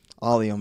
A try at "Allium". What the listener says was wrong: Allium, not I don't know why you keep saying all. Like it's not 2 L's in there.